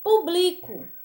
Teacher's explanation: E já publico, como bli é mais forte, aqui ela já vai ser uma paroxítona.